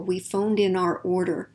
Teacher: the ed right before that next word that begins with a vowel is going to be clearer